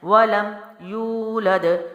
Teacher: یولد واو مد ہے کیونکہ پیچھے پیش ہے تو واو ساکن سے پہلے پیش ہو، ایک الف لمبا کرتے ہیں